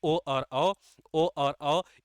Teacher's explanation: इनका उच्चारण स्थान क्या होता है, कंठोष्ठ होता है, कंठोष्ठ होता है।